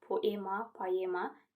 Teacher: İstisna olaraq oe birləşməsi var. Oe tələffüzdə ae olur. · O-e tələffüzdə a-i olur